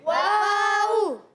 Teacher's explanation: واو ہمیشہ ہونٹوں کی گولائی سے ادا ہوتا ہے